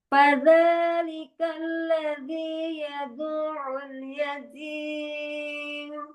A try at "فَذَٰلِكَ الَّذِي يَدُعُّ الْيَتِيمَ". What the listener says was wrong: Gimana, Ini masih naik ini. Jadi misalnya di mana surah Al-Fatihah kemarin. Maliki yaumiddin. Itu din. Maliki yaumiddin.